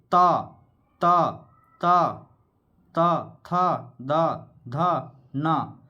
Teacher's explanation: दांत का प्रयोग हो रहा है इसमें त थ बोलने में